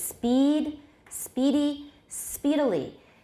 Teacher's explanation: Another kind of length variation is exemplified by sets of words such as speed, speedy, speedily. Here, the vowel in the stressed syllable gets progressively shorter as extra syllables are added to the same word